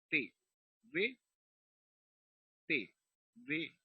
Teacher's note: Los otros que son dentales, el sonido se produce entre los dos dientes, entre los dientes superiores e inferiores